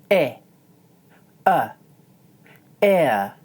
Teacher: This diphthong is comprised from the sounds /ɪ/ & /ə/. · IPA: /ɪə/